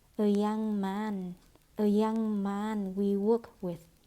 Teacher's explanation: Xảy ra cắt âm, không phải là we'd worked with mà là we work with